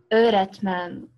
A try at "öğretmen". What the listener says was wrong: Yeah, you just have to make ö a little bit longer. Öğretmen.